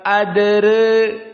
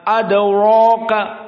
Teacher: Maka inilah yang diinginkan dengan at-tarqiq ar-ra ma'at taqlil atau al-imalah as-sughra. Maka dibaca dal qalqalah sughra, ra-nya tarqiq ma'a al-imalah as-sughra atau istilah Wars at-taqlil. Bacanya adraka, ra-nya muraqqaqah, adraka.